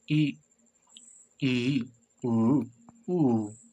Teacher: संव्रत स्वर इसमें लगभग मुंह बंद रहता है